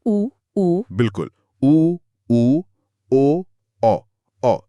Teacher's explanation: ये दो प्रकार के होते हैं। पहला है वृत्तमुखी, जिसमें होंठ पूरी तरह गोल हो जाते हैं